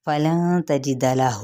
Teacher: فلن تجد لہ، نون پہ اخفاء حقیقی، تا کی زبر، جیم کی زیر اور دال کا زبر، ان کو لمبا نہیں کریں گے